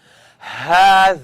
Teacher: it's coming from the first part of my throat